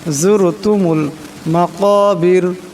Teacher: যুরতুমুল, জুর এখানে রা সাকিন, তার ডাইনে যার উপর পেশ আসছে, তাই এই রাকে মোটা করিয়া পড়তে হবে। · মাকা, এখানে বড় কাপ, আওয়াজটা গলা থেকে আনতে হবে